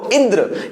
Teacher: इंद्र मतलब छोटी ई पर बल लगाना पड़ेगा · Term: स्वराघात या बालाघात